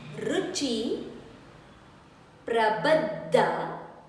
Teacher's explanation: Da needs to be stressed.